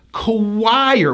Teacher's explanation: we pronounce this word as choir with a strong hidden W sound. Choir with a high I going to an R.